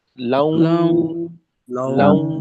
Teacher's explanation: লাউ আওয়াজ কিন্তু নাকে যাবে একেবারে সরাসরি